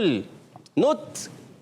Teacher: زبان کا سرا اور اوپر کے دانتوں کی جڑ سے ادا ہوتا ہے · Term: تا کا مخرج